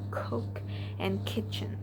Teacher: The back of the tongue touch the soft palate firmly stops the airflow and then releases it sharply to produce the C sound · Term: k sound